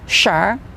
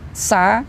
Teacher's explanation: Nah, ini makhrajnya dari tengahnya lidah, jim, shin, ya. Sedangkan sin, sa, ini dari ujung lidah.